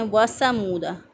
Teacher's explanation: سا میں سیٹی کی آواز پیدا کر کے پڑھتے ہیں وَثَمُودَ، تو غلط ہو جائے گا، درست ادائیگی ہے وَثَمُودَ الَّذِينَ۔